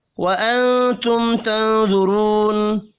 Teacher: نون ساکن کے بعد تا ہے، اخفاء حقیقی ہوگا